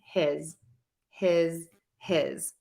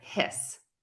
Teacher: the vowel is slightly longer when I say the word his with that Z sound at the end